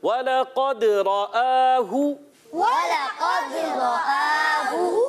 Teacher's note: रा पर ज़बर आने की वजह से रा को पुर करेंगे